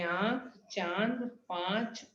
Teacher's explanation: इसका उच्चारण नाक और मुंह दोनों से होता है। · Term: अनुनासिक